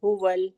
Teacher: हलक के सीने वाले हिस्से से अदा होता है, तो आवाज आएगी हुवल, बहुत आसानी से, ठीक है। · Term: दो चश्मी